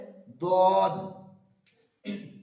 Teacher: এখানে দদ অনেকে দদও বলে আবার জদও বলে, তো এটাও ঠিক তেমন ভাবে উচ্চারিত হবে দাঁতের মানে জিভের কিনারা মাড়ির দাঁতের সঙ্গে লাগিয়ে উচ্চারিত হবে দদ